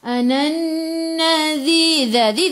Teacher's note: Dhi hujung lidah keluar pada gigi depan, dhi 2 harakat, ada ya mad asli.